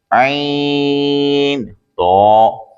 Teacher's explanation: عین تو، عین حلق کے درمیان سے، اور تو زبان نوک اوپر کے دانتوں کی جڑ سے ادا ہوتا ہے۔ تو حرف مستعلیہ بھی ہیں، اسے ہمیشہ ہر حالت میں پورا یعنی موٹا پڑھتے ہیں